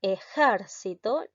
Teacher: la sílaba tónica recae en la sílaba ger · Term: palabra esdrújula